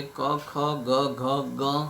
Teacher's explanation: તેમાં ક વર્ગ આવે છે ક, ખ, ગ, ઘ, ગ. આ વ્યંજનો કંઠ્ય કહેવાય છે કે જેનો ઉચ્ચાર કરવા માટે કંઠની આવશ્યકતા પડે છે. એટલે કે કંઠની વધારે આવશ્યકતા આ અક્ષરોના ઉચ્ચારમાં જરૂરી છે.